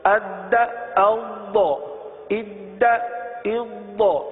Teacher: اب دال اور ضاد میں فرق دیکھیے. دال میں جماؤ ہے لیکن قلقلہ بھی ہے، لیکن ضاد میں جماؤ تو تھوڑا سا محسوس ہوتا ہے، جماؤ کی سی صورت ہے، صفت استطالت ادا ہوتی ہے، لیکن آواز ٹوٹتی نہیں ہے، قلقلہ نہیں ہوتا، صحیح نا.